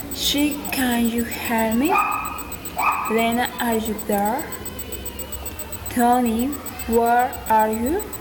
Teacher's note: Direct address, raising intonation.